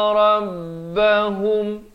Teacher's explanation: Sempurna saja mim mati itu jangan dipanjangkan, terus masuk. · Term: idhar syafawi